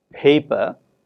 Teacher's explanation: force for example when we have a word such as paper the first syllable pay is stressed and it is clearly heard to be pronounced with greater more breath than per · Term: extra breath force